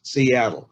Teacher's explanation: his name is three syllables with the emphasis on the second syllables